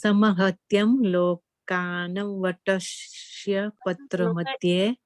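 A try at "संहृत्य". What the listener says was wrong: No. It's not Samhrityam. It is Samhritya. Samhritya. There is no M at the end.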